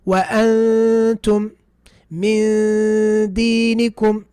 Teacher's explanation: my tongue is going to the place for the dal, getting ready to pronounce the dal, but I still have the ghunna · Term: ikhfa